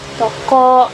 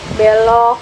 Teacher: Bunyi O dengan bunyi os setengah atau C yang terbalik merupakan alopon yang distribusinya ditentukan oleh jenis suku kata, yaitu terbuka dan tertutup.